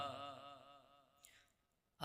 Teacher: یہ والا ہا باریک ہے، ہا اس میں ہا حلق کے درمیان سے ادا ہوتا ہے